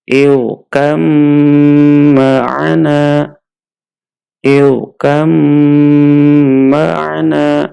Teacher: Karena ba-nya kita masukkan ke huruf mim, kemudian mimnya bertasydid. Mim bertasydid dibaca dengan dengung.